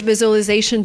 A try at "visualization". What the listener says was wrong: I cannot say a great visualization tool. The word is pronounced differently. We don't say visualization. We say visualization. So it's not the z sound like zebra, it's the zh sound like usual, visual. We have the long oo sound plus the o. So we have the w sound in the middle linking the vowels.